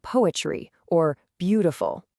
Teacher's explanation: One hard beat then two soft ones. Dum-da-da. This one feels a little more formal, almost grand. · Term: dactyl